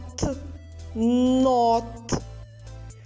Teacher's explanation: звук н приголосний твердий позначаємо рисочкою звук о голосний позначаємо кружечком звук т в кінці слова приголосний твердий